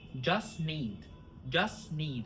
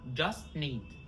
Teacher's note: We drop the T of just.